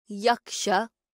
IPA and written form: ˈjəkʂ(a) (yaksha)